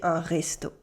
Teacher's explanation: Un restaurant is easy, it's a restaurant in English, but in informal everyday spoken French, we tend to cut the ending and say un resto